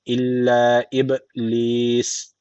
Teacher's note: Bir elif uzatıyoruz. Eee B harfi de cezim aldığı için kalkale tecviti var. Şu B'yi hafif bir vurguluyoruz. En sonunda da meddi arız tecviti var.